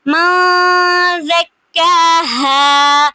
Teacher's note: قد افلح من زکاها، قد پہ دال پہ قلقلہ ہو رہا ہے، افلح من زکاها، من زکاها پہ حروف اخفا میں سے ہے زال، نون ساکن کے بعد حروف اخفا میں سے زال آ رہا ہے تو نون کی آواز کو ہم تھوڑی دیر کے لیے ناک میں چھپائیں گے۔ من زکاها، ہاں پہ الف مدہ اور ساتھ میں وقف ہو رہا ہے۔